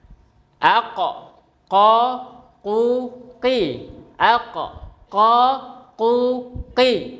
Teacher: Diingat ya, huruf qf ee keluar dari pangkal lidah bertemu dengan langit-langit yang lunak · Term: huruf qof, huruf qaf